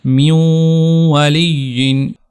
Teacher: تو جب واو آ گیا تو یہاں پر اب ہم اس کو من والی نہیں پڑھ سکتے، یہاں پر بھی ادغام ہوگا، نون ساکن کی جو آواز ہے اس کو ختم کر دیا جائے گا، اس کو مدغم کر دیا جائے گا، اس کو مرج کر دیا جائے گا واو میں، تو پڑھا جائے گا میوں والی۔